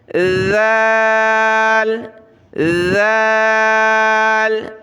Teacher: اگلے حرف میں کیا ہے، اس کی طرح ہے بالکل جیسے کہ یہاں زبان کی نوک باہر نکالی دانتوں سے، نرمی کے ساتھ ادا کیا، تو یہاں بھی ہم نے دانتوں سے زبان نکال کر نرمی سے ادا کرنا ہے